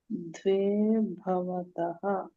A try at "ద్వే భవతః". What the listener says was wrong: ద్వే. ద్వే అంటే మహాప్రాణం చెప్పొద్దు. ద్వే భవతః ఇది